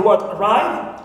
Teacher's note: I have the word arrive so always uh second syllable is stressed